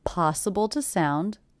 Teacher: The word to is definitely reduced to the schwa